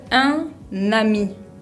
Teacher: Eso pasa cuando tengo una palabra que termina con una consonante y la que le sigue directamente empieza con una vocal. Lo que hago en este caso es que uno las palabras, uno la consonante final con la vocal del principio. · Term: liaison